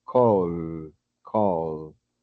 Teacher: cuando pronunciamos solamente el verbo en modo infinito, call, nuestra garganta sigue vibrando. Call, call. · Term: sonoro